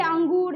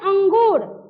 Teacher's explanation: इसका उच्चारण नाक से होता है और उच्चारण में थोड़ी कठोरता होती है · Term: सानुस्वार